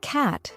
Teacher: English has a lot of long drawn out vowels for example the word cat has a broader a a sound compared to British English